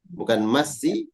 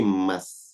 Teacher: Wakaf artinya berhenti. Kalau berhenti, maka huruf sin disukunkan, mati.